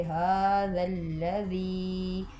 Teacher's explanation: دال دونوں دانتوں کے درمیان زبان کی نوک، اور دال کے بعد یا مدہ ہے تو اس کو لمبا کریں گے۔